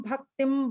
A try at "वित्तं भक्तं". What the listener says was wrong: the last name, Vittam Bhaktam, not Bhaktim. Bhaktam